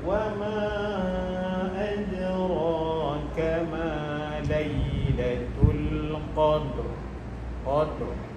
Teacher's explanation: Tebal lidah kita bergetar dalam keadaan menaik ke ke atas. Ro bila sebut ro dia ro dia menaik ke a ke atas.